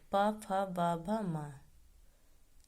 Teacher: ये वर्ण ओष्ठ को स्पर्श करते हुए निकलते हैं। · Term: पा वर्ग